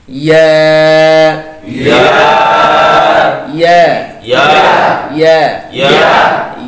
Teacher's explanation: ইয়ার সিফাত হচ্ছে ইয়া বাতাস বের হবে না, ইয়া নরম হবে। কেমন? ইয়া নরম হবে, পাতলা হবে।